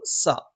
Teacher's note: നാവിന്റെ കൂർത്ത അറ്റത്തിന് മുകൾഭാഗം രണ്ടു വരി മുൻപല്ലുകൾക്കിടയിൽ പിന്നിലായിട്ട് വെക്കുന്നു